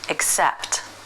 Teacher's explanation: The word accept, the S sound starts the stressed syllable, accept.